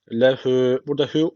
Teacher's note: hü bir elif uzatıyor arkadaşlar. Çünkü öncesindeki harf harekeli.